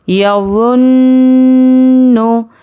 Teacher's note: नाक में थोड़ी देर आवाज़ को रोकना है, एक अलिफ के बराबर गुन्ना करना है।